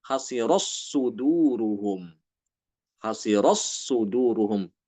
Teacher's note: Jadi tanya hilang ya, masuk ke dalam huruf shad. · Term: idgham